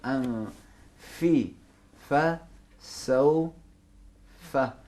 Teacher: फा कहाँ से अदा होता है, ऊपर वाले दांत नीचे वाले होंठों के नरम हिस्से पे लगेंगे